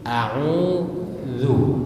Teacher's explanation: za itu dikeluarkan ujung lidah sedikit dari gigi dan tidak ditekan. Karena kalau ditekan berbunyi a'udzu.